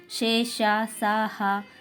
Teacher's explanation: ప్రాణులు ఊది పలకబడే వర్ణాలు ఊష్మాలు